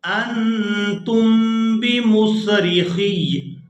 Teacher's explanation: خا کو یا مشدد کے ساتھ ملائیں گے، لیکن اوپر جو یا کے اوپر زبر ہے اس کو وقف کی وجہ سے نہیں پڑھیں گے، انتم بمصرخی، خی یعنی سختی کے ساتھ اس کو ادا کریں گے وقف کرتے ہوئے بھی، انتم بمصرخی، انتم بمصرخی۔